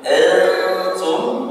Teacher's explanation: masuk ke dalam gunnah, gunnah kamilah, gunnah yang sempurna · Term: ikhfa hakiki